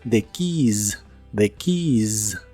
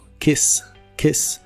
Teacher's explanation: la palabra Keys se pronuncia con la i larga o doble y al final con la z inglesa o s vibrante Porque si la pronuncias con la i cor y la s